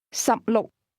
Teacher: 16 is pronounced with 2 low-level tones.